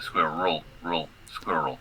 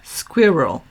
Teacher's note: Sort of like the R and the L almost together without anything in between.